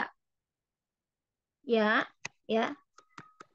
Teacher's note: Dari mana keluarnya? Keluarnya dari tengah lidah.